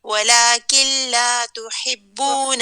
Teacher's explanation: یہاں پہ نون ساکن ہے, نون ساکن کے بعد لام ہے, اور جب نون ساکن کے بعد لام آئے گا وہاں پہ جو ادغام ہوگا وہ مکمل ادغام ہوگا, نون کی آواز غائب ہو جائے گی, وہ اس میں پوری طرح مدغم ہو جائے گا, اور آپ پڑھیں گے یہ وَلَكِن لَا تُحِبُّونَ اوکے میم.